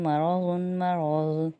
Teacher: ضاد کو موٹا پڑھیں گے کیونکہ ضاد حروف مستعلیہ میں سے ہے